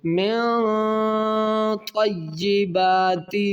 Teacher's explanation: یہاں پر نون ساکن کے بعد حروف اقفا میں طا ہے تو یہاں اقفا غنہ کریں گے